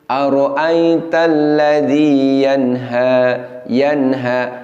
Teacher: Ada dengung tetapi hampir tidak begitu terasa karena dengungnya sangat singkat dan sangat pendek.